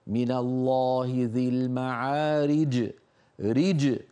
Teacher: عليك أن تبين حرف الجيم وتقلقله · حرف قوي الجيم، ومكانه وسط اللسان ومقلقل وشديد